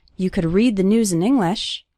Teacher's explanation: the stressed syllables are read, news, and the first syllable of English, in. You could read the news in English while eating breakfast.